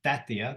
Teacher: the first vowel is front, so therefore the last vowel will also be front, irrespective of the E in between.